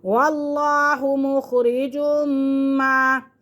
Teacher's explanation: کے پڑھتے ہیں، واللہ مخرج ما، میم مشدد بھی ہے اور تنوین کے فوراً بعد میم آ رہا ہے تو میم یرملون میں سے ہے تو یہاں پہ ہم غنہ کریں گے · لفظ اللہ کی لام کو پر کر کے پڑھتے ہیں